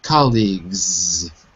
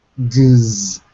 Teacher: Because the G is voiced. Gz. You use your voice, so it sounds like a Z.